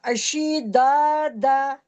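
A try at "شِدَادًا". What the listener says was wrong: मोटा नहीं पढ़ना। बराबर बराबर, लेकिन खींचना क्या है, बराबर बराबर।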